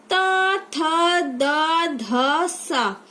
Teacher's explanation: इसमें हमारी जो जीभ है उसके नोक जो है ऊपर के दांतों को स्पर्श कर रही है। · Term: दंती व्यंजन